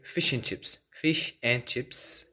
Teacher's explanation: in this way the word and is in a weak form